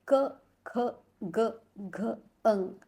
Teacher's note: जैसे हम लोग अगर बोलेंगे उसका उच्चारण हम लोग करेंगे क, ख, ग, घ, अंग, तो हमारे कंठ में वाइब्रेशंस आते हैं, तो इसलिए इसका उच्चारण स्थान हो जाता है कंठ।